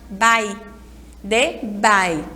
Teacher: Bai é a sílaba mais forte. E aí ela é também a penúltima sílaba.